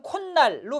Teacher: 실제 발음은 콧날로 발음되는 니은 첨가, 즉 사잇소리 현상이 있죠. 그리고 앞에 말이 모음으로 끝났으니까 앞에가 오로 끝났잖아.